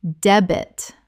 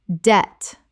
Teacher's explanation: The B is completely silent. One syllable only.